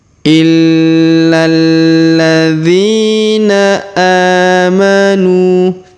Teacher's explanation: Kemudian huruf nu kita panjangkan dua harokat karena di depan huruf nu terdapat waw sukun, sedangkan alifnya tidak dianggap ya atau tidak perlu dibaca.